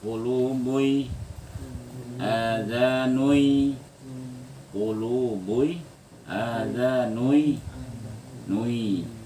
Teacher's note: Idgham arti idgham, hilang huruf nunnya, tinggal dengungnya. Karena huruf nun itu sifatnya dengung, hilang nunnya, tinggal dengung.